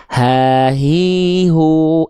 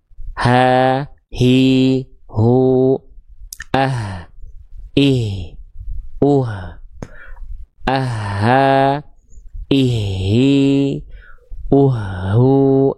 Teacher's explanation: H besar itu bukan dari dada ternyata, tapi dari tenggorokan yang paling pangkal